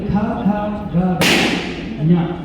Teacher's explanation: ಈ ಶಬ್ದಗಳು ನಿಮ್ಮ ಕಂಠದಿಂದ ನಾಲಿಗೆ ಕಂಠಕ್ಕೆ ಅಲ್ಲಿ ಟಚ್ ಆಗುವುದರ ಮೂಲಕ ಈ ಶಬ್ದಗಳು ಬರುತ್ತೆ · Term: ಕಂಟವ್ಯಗಳು